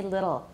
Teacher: i have a tap and a schwa